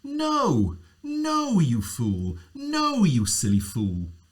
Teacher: the high fall. You start high and you come down